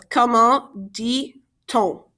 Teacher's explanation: when we have a consonant like T and a vowel like O, the T connects to the O. So it's comment dit-on.